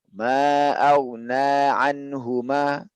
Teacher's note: karena nun ini punya dengung sedikit ya, dengung kecil sedikit dia.